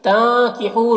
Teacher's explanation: نون میں اخفا ہوگا، اس نون کی آواز کو ناک میں چھپا کر پڑھیں گے۔ ہو یہاں پر واو مدہ ہے، اسے بھی ایک الف کے برابر کھینچ کر پڑھیں گے۔